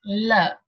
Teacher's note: of our tongue it is touching the elevator Ridge and here air escapes from the sides of the tongue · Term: laterals